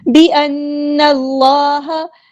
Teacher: نون پہ غنہ زمانی ہو رہا ہے، ایک الف کے برابر ہم رکیں گے